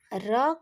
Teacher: र का उच्चारण करते समय जीवा में कंपन होता है अत इसे प्र प्रक पित व्यंजन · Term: लुंठित व्यंजन